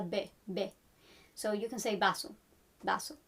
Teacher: the V can also be pronounced in Latin America and in some parts of Spain as a B